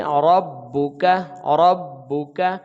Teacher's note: را کو ہم با کے ساتھ ملائیں گے، با کے اوپر پیش ہے تو گول آواز ہو جائے گی، لیکن اس کو جلدی ادا کریں گے، با دو مرتبہ پڑھا جائے گا، اور اسی طرح یہ کاف پھر وہی آ گیا، تو اس کو ہم جلدی ادا کریں گے۔